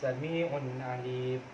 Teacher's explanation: ketika tanwin bertemu dengan huruf ain, yaitu hukum bacanya izhar dan harus jelas